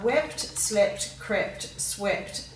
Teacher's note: So rather than adding ed to the end, we're changing the long E sound in weep to a short vowel sound